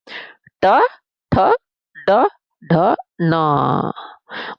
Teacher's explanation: जब हमारी जीभ हमारी दांतों से ऊपर वाले हिस्से को छूती है उसे हम मूर्धा बोलते हैं। तो जब हम ट ठ ड ड बोलते हैं बेटा तो हमारी जीभ वहां से टकराती है तो वो शब्द हमारे मूर्धा से बोले गए।